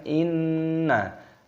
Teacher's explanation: Perhatikan di sini ada nun tasdid, hukumnya dibaca gunnah. Cara membacanya itu didengungkan